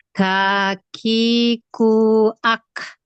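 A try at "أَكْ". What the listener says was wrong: Sekarang renggangin nafasnya ketika hamas, jangan kebanyakan ak. Terlalu banyak. Ak. Sedikit aja. Ak. Sedikit aja ya.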